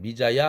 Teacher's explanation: 반모음 이가 들어가고 아가 붙은 것입니다